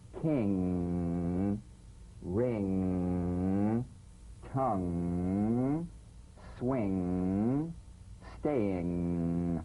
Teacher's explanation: The NG is a voiced, tongue-backed, soft palate nasal consonant. So sing with the back of the tongue in contact with the soft palate